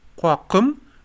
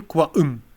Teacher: uvular becoming glottal stop